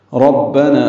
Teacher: ربنا را کو پر پڑھیں گے، نا الف مدہ ہے تو حرکات لمبا